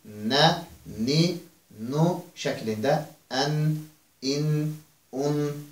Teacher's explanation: Burun boşluğundan gələn səsə sahib olan, malik olan bir hərfdir. Ona görə bunu tələffüz etdiyimiz zaman istər-istəməz burnumuzun içərisində bir yanğını da hiss edə bilirik biz.